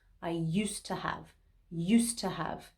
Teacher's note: And that's because in the positive statement, there's a D sound next to a T sound. And so to make it easier to say, we actually drop the D sound at the end of used. I used to have, used to have.